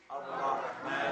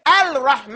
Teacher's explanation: there's a lam right there, but we don't pronounce it